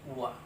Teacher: दंत और ओष्ठ की सहायता से व